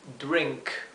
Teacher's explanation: drink lo he escrito drink aquí en verde pero sepan que la r se pronuncia R con la lengua eh dada vuelta hacia atrás del paladar